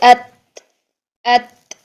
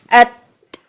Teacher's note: Next देखें, जब साकिन हालत में हम इनमें डिफरेंस देखते हैं, तो ता को जब हम साकिन हालत में अदा करते हैं तो हमने कहा था कि इसमें सांस जारी करेंगे, कैसे, अत, इस तरीके से अत, सांस को जारी करेंगे।